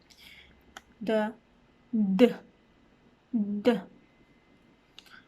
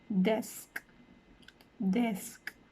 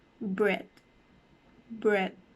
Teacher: the tip of your tongue will also be touching your alveolar ridge, so it is called an alveolar consonant